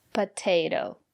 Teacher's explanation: the first letter T is pronounced as T because the syllable after the letter T is stressed potato and the second letter T is pronounced as a fast